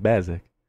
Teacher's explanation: é como se fosse uma paroxítona